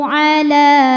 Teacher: Karena lam berbaris fathah panjang maka huruf lam panjang dua harakat. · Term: mad thobi'i muqaddar